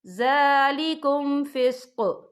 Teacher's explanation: وقف کی صورت میں قوف ساکن ہو جائے گا اور ہم یہاں قلقلہ بھی کریں گے